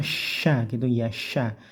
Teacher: ee desisnya merata di mulut ee di atas lidah itu e anginnya merata ke kanan ke kiri ke atas ke bawah